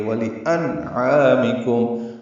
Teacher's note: نون ساکن ہے اور اس کے بعد عین حروف اظہار میں آنے کی وجہ سے نون ساکن کے بعد ظاہر کر کے پڑھیں گے